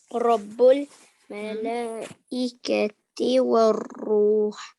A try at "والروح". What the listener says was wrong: یہ بہت زیادہ ہو گیا. والروح را کو بہت زیادہ نہیں، آپ نے اس میں تھوڑی ٹریلنگ ساؤنڈ آتی ہے لیکن بہت زیادہ نہیں کرنی. ٹھیک ہے والروح.